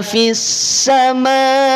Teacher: MWM, betul ya? Mad wajib mutasil. Panjangkan 6 harokat karena dia wakaf.